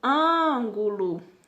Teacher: o an, ele sobressai, é a antepenúltima sílaba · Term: proparoxítona